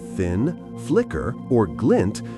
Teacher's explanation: the recurrence of high front vowels like the I sound in thin, flicker, or glint is often associated with smallness, quickness, or sharpness.